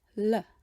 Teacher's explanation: we use a light L made with the tip of the tongue